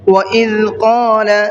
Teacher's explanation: ذال کو سافٹ کر کے پڑھنا ہے اور قال کے قاف کو منہ بھر کے پڑھنا ہے